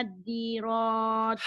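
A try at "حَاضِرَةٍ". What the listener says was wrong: Bu, bukan A tapi H. ya H. Hadirati.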